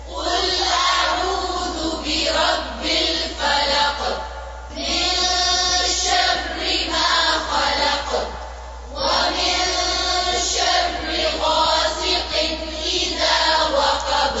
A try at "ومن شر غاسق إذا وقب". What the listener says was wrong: शर्रे नहीं है शर्री मार्क करें इसको जेर को और शद को भी फिर से वमिन